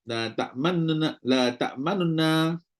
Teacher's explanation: Nu tu pendek 1/3 harakat. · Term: raum